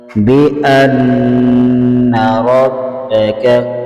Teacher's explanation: نون مشدد پر غنہ کریں گے